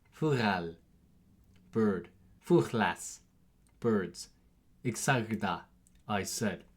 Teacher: G makes what is called a voiced velar fricative sound. This is a sound that's a little hard to make for English speakers because we don't have this sound in our language.